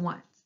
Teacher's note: This word starts with the letter O, but the O makes a W sound.